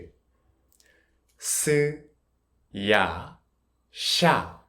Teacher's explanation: when s is followed by vowels like ya, yo, yu, or you, because of the shape of the mouth, it can sound like sh